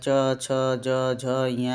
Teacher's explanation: तो तालव्य व्यंजन तालु के द्वारा जिसका प्रयोग होता है च, छ, ज, झ, ञ आप बोलेंगे तो आपकी जीवा जो है वह तालु में जाकर लगती है